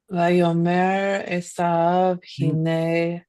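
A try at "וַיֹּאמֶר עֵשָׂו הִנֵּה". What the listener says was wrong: I've noticed a lot of people don't put the stress here on the yod. Could you put the stress on the yod as you read, please? Vayomer Esav, hine anochi holech lamut, velama ze li bechora.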